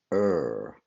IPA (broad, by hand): r